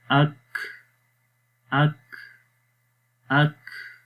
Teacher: تو آخر میں دیکھیں کاف کی آواز سانس یعنی کہ جاری ہو رہا ہے، یہ ہمس ہے۔